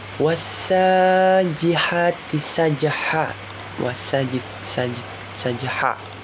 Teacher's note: Itu hukum bacaannya qalqalah ketika salah satu ko, do, ro, ja, ba. Cara bacanya seperti dipantulkan huruf qalqalahnya